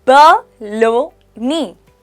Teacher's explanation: Now, here's a fun one. Baloney, pronounced as ba-lo-ni. The stress is on the second syllable.